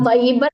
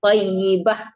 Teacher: itu kan ta marbutah matinya ha ya.